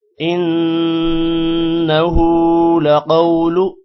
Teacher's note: انه نون پر غنہ ہوگا جبکہ ہا پر الٹا پیش ہے لمبا کریں گے. لقول قوف موٹا ہوگا، قوف کے بعد واو ہے، تھوڑا سا لمبا کریں گے اور لو کو لمبا نہیں کرنا.